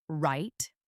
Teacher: Now say right with a falling firm tone as if you are confirming something.